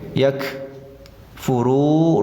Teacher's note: waw sukun sesudah dhamma panjang 2 harokat, namanya mad tabi'i atau mad asli.